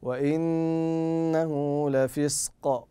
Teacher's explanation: تعطى غنه بمقدار حركتين وطريقه نطقها ان تركن عليها بمقدار حركتين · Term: النون المشدده